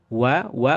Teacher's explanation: Adapun wau, ba dan huruf mim ini baru dua bibir ya. Kalau wa ini bibirnya gerak sehingga maju ke depan. Wa. wa bergerak.